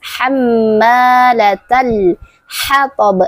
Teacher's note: Nah, setelah huruf ta terdapat huruf alif lam qamariyah. Nah, sering juga disebut dengan izhar qamariah. Jadi, huruf lamnya dibaca jelas.